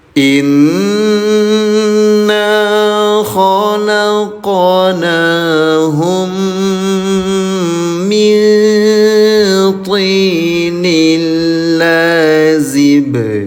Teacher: Mim bertemu dengan mim namanya idgam mimi. Dengungkan cara bacanya dua dua harakat. · Nun sukun bertemu dengan huruf th namanya ikhfa. Samarkan tahan dua harakat. Tanwin bertemu dengan huruf lam namanya idgham bila gunah.